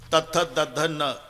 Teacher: जेव्हा संबंध दाताशी येतो ते दंते आहे. तथ दध न, किती ताकद लावून धक्का मारते जीभ आतून दाताला. त थ द ध न, पूर्ण लाईन ही दंते आहे.